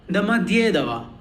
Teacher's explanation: See how I am stressing more on Dye.